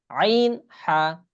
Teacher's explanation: গলার ভিতর থেকে আইন আইন হা অনেক ভিতরে একদম অনেক ভিতর থেকে বলতে হবে